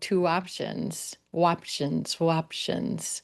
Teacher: you'll notice that in those vowels where your lips round like our blue moon oo vowel or our roseboat o, you'll often link into that next word with a gentle www sound